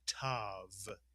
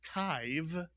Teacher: But what if we add a vav to this word, and now the kamatz yud is not at the end any longer, but it's inside the word, then it simply makes the vowel sound of the kamatz ah, it does not change to i